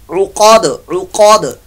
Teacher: वक्फी सूरत में दाल साकिन जो है ये कलकला बन जाएगी, उक़द उक़द।